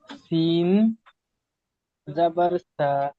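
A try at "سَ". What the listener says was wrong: সা টান হবে না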